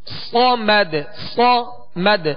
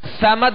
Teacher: صاد کو سیٹی کی آواز میں سختی سے ادا کریں گے اور پر پڑھیں گے، باریک نہیں پڑھیں گے